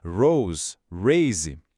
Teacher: Esse R não é aquele R caipira do português, nem o R enrolado do inglês. É um som arranhado que vem da garganta mesmo. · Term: som gutural